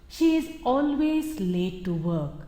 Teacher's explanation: the emphasis is on always which says that she is never punctual it helps to identify the exact connotation of the words or